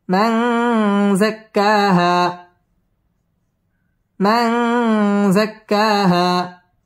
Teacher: হা মদ তবাই একালিফ টান দিয়ে ওয়াকফ করতে হবে